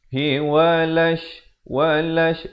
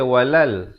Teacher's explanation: Sebab di sini alif lam syamsiah. Lamnya tidak dibunyikan.